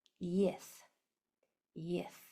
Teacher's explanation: Sounds like I have a lisp, but it's supposed to. Your tongue goes between your teeth and you blow.